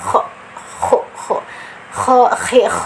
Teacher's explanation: Kho ini ada di tenggorokan bagian atas, jadi kho kho kho kho kho, jadi seperti orang ngorok ya.